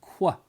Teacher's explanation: And the reason why QU is a CC is because from a phonetic standpoint, Q and U, even though U is a vowel, Q is always attached to the letter U. And that sound is actually K and W kind of coming together. So we have qua, right, for Q and U together.